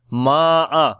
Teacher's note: Meme we long due to alif madda and there is mad sign, which is madde muttasil, so we long 4 to 5 seconds there